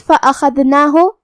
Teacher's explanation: خا کی ادائیگی حلق کے اوپر والے حصے سے ہے اور خا حروف التفخیم میں سے بھی ہے، تو ہم یہ حرف کو بھاری آواز میں پڑھیں گے. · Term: حرف الخا